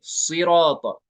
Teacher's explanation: सिराता में साद को पुर पढ़ेंगे